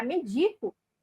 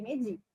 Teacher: do ponto de vista da pronúncia nós temos o e aberto e nós temos o e fechado em medida